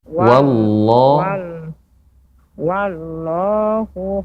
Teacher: wa dibaca dengan tipis